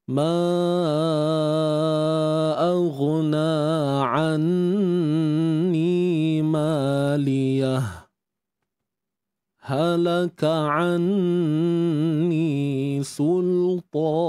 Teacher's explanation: Senyap sebentar dalam tempo ataupun kadar 2 harakat tanpa mengambil nafas baru, kemudian terus baca. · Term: saktah